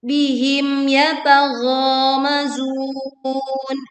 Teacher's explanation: bihim jelaskan bunyi mim sukun tanpa memantul juga tanpa memutus